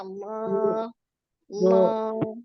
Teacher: kuncinya agar tebal hurufnya apa tadi pangkal lidah kita na naik lidah yang paling belakang ini naik ya jadi bunyinya tebal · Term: lam tebal